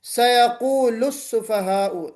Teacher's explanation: سیقول میں ضمہ ہے، ہم اس لام کو بھی پر نہیں پڑھیں گے، باریک پڑھیں گے